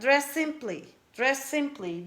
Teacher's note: Do not add another vowel sound between dress and simply. Pronounce a little bit longer, like dress simply.